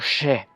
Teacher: sonido fricativo prepalatal sordo. Eso quiere decir que lo que se escribe con X suena como she.